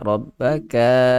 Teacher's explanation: Ka jangan panjang Rabbaka. Ka tak perlu panjang.